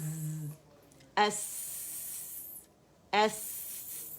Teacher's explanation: سین میں بھی صفیر ہے, باریک ہے, ہمس ہے